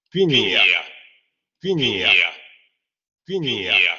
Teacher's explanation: Cerrada anterior no labializada, la que conocemos del español. También la tenemos en francés y con esa no deberíamos tener ningún problema.